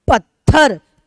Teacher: तथ संयुक्त है और तथ पे हम ज्यादा बल दे रहे हैं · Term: बलाघात